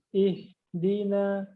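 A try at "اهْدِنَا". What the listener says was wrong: Nah, itu udah pas.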